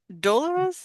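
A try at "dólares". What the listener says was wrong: You said the but it's an O.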